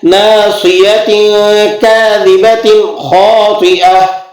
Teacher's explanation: تو کاذبۃ کے بعد اگلا حرف کیا آ رہا ہے؟ خا، اور خا حروف حلقی میں سے، لہذا یہاں پر آپ نے غنہ نہیں کرنا